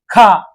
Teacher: ఇవి అధిక శ్వాసతో పలకడం జరుగుద్దండి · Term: మహాప్రాణులు